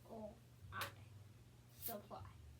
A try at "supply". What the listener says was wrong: When you try that one, you got all the sounds except for I was missing the very first vowel. Try that again. Supply.